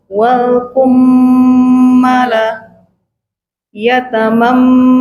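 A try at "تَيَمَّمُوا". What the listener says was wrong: Salah, bukan yatam. Dibalik.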